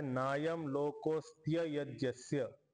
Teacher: इथं आपण अ चा उच्चारण नाही केला आणि आपण इकारचा उच्चारण पण नाही केला इकारच्या ऐवजी आकारच्या ऐवजी डायरेक्ट य म्हणलंय लोक लोकोस्त्य यज्ञस्य नाय